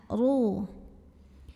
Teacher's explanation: Huruf ra dibunyikan secara tafkhim sebab baris hurufnya adalah dhammah. Maka dibacanya ditebalkan, pangkal lidah angkat.